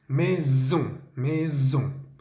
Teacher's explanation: la palabra casa, maison, vemos una S entre la I y la O. Debemos hacer que vibre